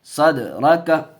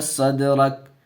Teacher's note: یہاں قلقلہ ہوگا، دال حروف قلقلہ میں سے اور اس کے اوپر جزم ہے